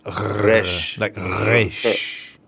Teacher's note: the resh makes more of a gargling sound